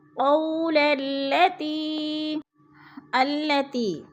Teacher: قول التی، قو پہ وہ لین ہے، وہ ساکن سے پہلے قاف کے اوپر زبر ہے، تو وہ لین کو ہم نے لمبا بھی نہیں کرنا اور جھٹکا بھی نہیں دینا، آرام آرام سے ادا کرنا ہے